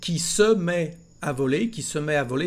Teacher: he said qui se met à voler, so with no liaison between the words